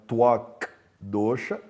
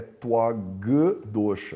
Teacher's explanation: Então, o K, quando ele junta com o D, ele vira G, então não é Twak Dosha, é Twag Dosha. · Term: sandhi consonantal